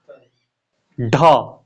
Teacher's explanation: जो जीभ है, जिह्वा जो है, वो झटके से ऊपर नीचे आती है इनके उच्चारण में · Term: उत्क्षिप्त व्यंजन